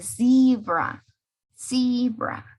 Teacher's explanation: Tenemos zebra con Z y como ustedes saben en inglés, la Z, letter Z, tiende a sonar o haber una vibración cuando utilizamos esta consonante